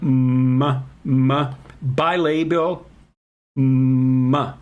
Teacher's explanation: Nasal sounds like m, bilabial, m. You let the air come out through your nose. Okay, so there's like resonance inside your nasal cavity.